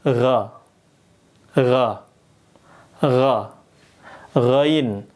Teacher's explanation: Ini tenggorokannya atas dan ada getarnya ko kayak orang ngorok itu loh